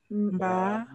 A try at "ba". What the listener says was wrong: Quelqu'un dit mba, c'est même pas mba, il n'y a pas m. C'est seulement mba.